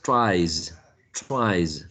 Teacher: um the same situation happens but this time with uh voicing because drive is voiced therefore we used a voiced z